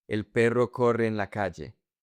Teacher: You merge the two E's.